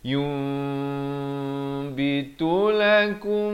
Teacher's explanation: ditukarkan daripada bunyi nun, daripada yun kepada bunyi mim jadi yum. Tapi jangan lupa panjangkan 2 harakat. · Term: hukum iqlab